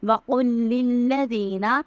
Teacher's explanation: وقل کا جو قاف ہے وہ حلق سے ادا ہوگا، للذین میں دال کو نرمی سے پڑھیں گے۔